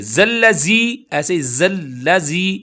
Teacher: زی کی آواز نہ آئے کیونکہ ذال ہے، نرمی کے ساتھ پڑھا جائے گا۔